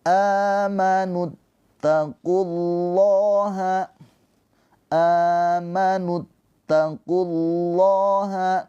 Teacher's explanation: lafaz Allah dibaca dengan tafkhim tebal karena sebelumnya didahului oleh harakat dommah. Ketika didahului harakat dommah atau fathah dibaca tafhim tebal pakai o. · Jadi secara penulisan dibuatlah menjadi fathah berdiri. Panjangnya a dua harakat seperti mad thobiiyah panjangnya sama. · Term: mad badal